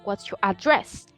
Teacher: I'm changing the stress because if I say what's your address, that would be an American variety. But if I stress the syllable in its last syllable, what's your address? I will be using a British variety of English.